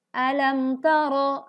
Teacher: Alam tara, ada pelajaran izhar syafawi. Mim sukun bertemu huruf ta, maka dibaca jelas di bibir.